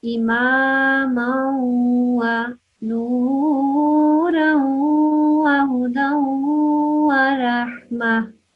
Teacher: Just make sure that when you see the tanween, the double strokes and the waw after that, that you say it with a nasal sound